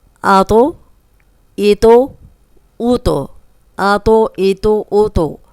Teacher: جب بھی تو پہ جزم آئے گی اس کو بھی ہم ہلا کے پڑھیں گے